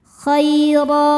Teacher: ro dibaca secara tafkhim karena berharakat di atas yaitu harakat fathah. Cara bacanya ditebalkan.